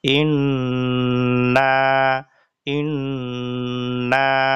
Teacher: উদাহরণস্বরূপ নুন এর উদাহরণ: হামজাহ নুন জের ইন, মুখ খোলা রেখে নাকের বাসি থেকে গুনগুনিয়ে পড়া। নুন আলিফ জবর না, ইন না, এটা হলো ওয়াজিব গুন্না।